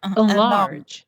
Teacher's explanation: the stress is on the second syllable and there's no spaces don't say in large no pause no